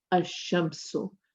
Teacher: But in the Shamsiya, you do not pronounce the lam.